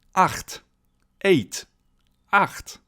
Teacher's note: the letter combination CH, which is pronounced ch in German. So it basically comes from your throat.